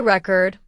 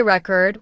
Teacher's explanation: with stress on the first syllable, it's a noun, like a music record. But if you say record with stress on the second syllable, it becomes a verb. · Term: word stress